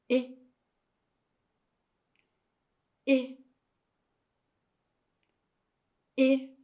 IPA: I